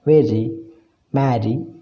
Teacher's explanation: During the articulation of some sound, the active articulator strikes quickly against the passive articulator just once. Such sounds are called taps or flaps.